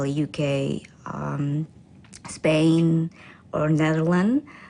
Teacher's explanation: she then lists the countries with her voice pitch Rising